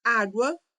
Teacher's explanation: na palavra água nós temos um ditongo crescente. Comecei com uma semivogal e cresci para uma vogal.